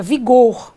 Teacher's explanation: tenho duas sílabas A última é tônica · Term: oxítona